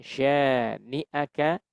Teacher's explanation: Kita tahan dulu. Kita panjangkan dengung tiga ketukan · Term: nun tasydid